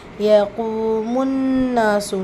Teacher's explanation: நூன் முஷததா குன்னா செஞ்சு ஓதுங்க